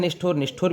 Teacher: इसमें स्थ जो है वो स्ठ में बदल जाता है, इसमें मूर्धन्य हो जाता है, वो मूर्धन्यकरण हो जाता है उससे स्थ शब्द का, तो ये निष्ठुर बन जाता है।